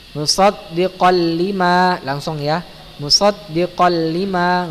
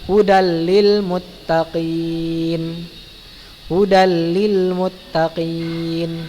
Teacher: Rumusnya apabila nun sukun atau tanwin bertemu dengan dua huruf, yaitu huruf lam dan ra ya, maka cara membacanya diidghamkan ya, dimasukkan ke dalam huruf berikutnya tanpa gunnah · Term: idgham bila gunnah